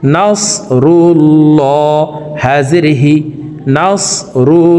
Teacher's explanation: তো প্রিয় দর্শক, এখানে দেখুন আল্লাহ শব্দের আগের হরফে পেশ আছে, এই কারণে এই লামকে ল বলে পড়ব, অর্থাৎ মোটা করে পড়তে হবে।